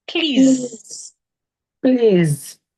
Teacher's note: That when you're begging someone, you say please. The s there changes to a zed.